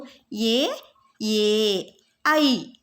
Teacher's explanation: ಕುತ್ತಿಗೆ ಮತ್ತು ದವಡೆಯ ಸಹಾಯದಿಂದ ಬರುವಂತಹ ಅಕ್ಷರಗಳು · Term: ಕಂಠ್ಯ ತಾಲವ್ಯಗಳು